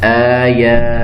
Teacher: دونوں کھڑی زبریں ہیں، تو دونوں کو برابر ہم لمبا کریں گے۔ یہ نہیں کہ ایک کو زیادہ کر دیں ایک کو کم کر دیں، آیا کہہ دیں یا آیا کہہ دیں، دونوں طریقے سے غلط ہوگا۔